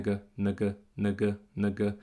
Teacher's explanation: Achte drauf, diese markierten Vokale hier, das sind auch E-Schwallaute. Also es ist nicht E, es ist nicht Ä, es ist ganz, ganz klein. Es ist nur eine Andeutung von einem Vokal.